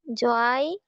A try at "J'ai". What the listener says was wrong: যায় না, এটা জি হবে।